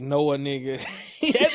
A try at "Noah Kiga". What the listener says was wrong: Everyone thinks the K is silent. It's not. The N should be silent. Noah Kiga. It sound exactly how it's spelled.